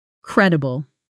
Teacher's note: Credible. Stress on the first syllable.